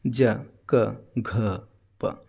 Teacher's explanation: जब आप घ बोलते हैं तो इसमें ज़्यादा हवा निकलता है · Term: महाप्राण